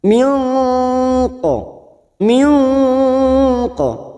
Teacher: Nun sukun bertemu qaf namanya ikhfa hakiki, dan ini juga disebut dengan ikhfa abad karena makhrajnya yang berada pada lidah bagian belakang